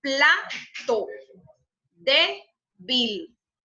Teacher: Entonces, es grave solamente con eso, de que tiene esa sílaba tónica en la penúltima sílaba